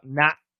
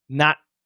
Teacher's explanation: if I did a glottal stop, not, my tongue is down. Not. And if I did a frontal stop, my tongue is up.